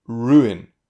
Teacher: when you have a short unstressed vowel followed by a stressed vowel, like in ruin, it can sound a bit like a diphthong. But if it sounds like 2 syllables, then it will be 2 syllables.